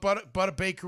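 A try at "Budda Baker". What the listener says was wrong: Buddha. No, you said Butter.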